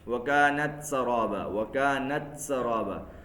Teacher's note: تو کاف اور تا میں ہمس بھی ہے اور شدت بھی ہے